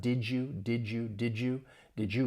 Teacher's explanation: that D and Y, they blend together. You get more of a J sound.